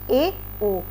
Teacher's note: इनमें बोलने में आपको ज़्यादा मुंह खोलने की आवश्यकता नहीं पड़ती। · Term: अर्ध संव्रत